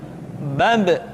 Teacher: Ketika mati, maka terdengar suara pantulan.